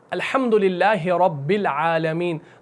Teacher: رب کے با کو ہم عالمین کے لام سے ملاتے ہیں، اس حمزہ کو ڈراپ کر دیتے ہیں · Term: حمزۃ الوصل